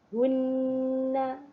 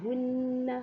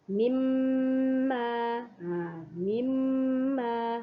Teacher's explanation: sama-sama dua-dua tu kena baca panjang kadar harokatnya ialah 2 harokat. Jangan lama sangat.